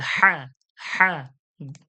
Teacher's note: হলকের মধ্য হতে আওয়াজকে চাপ দিয়ে হা, হা। কণ্ঠনলীর যে মাঝখান আছে ওই মাঝখান থেকে চেপে।